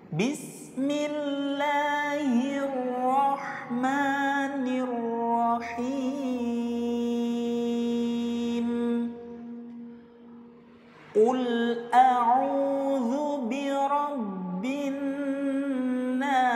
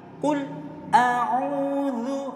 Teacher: lam sukun ini hukumnya adalah izhar mutlaq. Jadi harus terbaca jelas ya. Harus terbaca jelas.